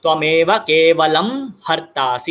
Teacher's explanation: जब अम प्लस ह आता है तो कुछ भी चेंज नहीं होता, इट विल बी म